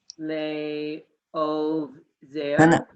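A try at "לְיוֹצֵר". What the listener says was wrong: No, that's a yud with that. So you put those together.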